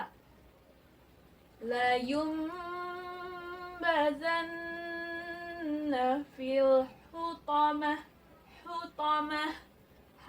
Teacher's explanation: jika wakaf dia berubah bunyinya menjadi ha